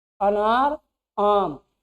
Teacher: जब आम आप बोलने जाएंगे तो आपकी जीभ पीछे भागेगी, और जब आप अनार बोलेंगे तो जीभ में कोई परिवर्तन नहीं होता, जहां बीच में बैठा रहता है वहीं बैठा रहता है, उस तनिको इधर उधर नहीं होता।